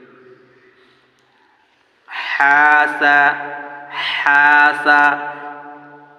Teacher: সবসময় কণ্ঠনালীর মধ্য থেকে উঠে আসবে আওয়াজটি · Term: বড় হা